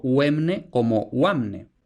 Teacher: Y ahora tenemos diptongación de esa o abierta tónica. Esta diptongación se puede presentar de varias formas, la que triunfará en castellano e, pero también podía diptongar como wa.